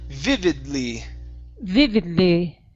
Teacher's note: So notice, you do not have to finish the D. We don't want to say vividly.